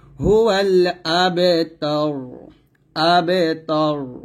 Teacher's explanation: এখানে রটা সাকিন করতে হবে এবং রটা মোটা করতে হবে কারণ এর আগে জবর আসছে · আমি র টাকে সাকিন করবো এবং মোটা করব